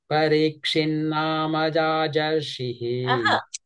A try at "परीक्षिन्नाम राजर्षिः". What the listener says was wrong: no why you are saying jajar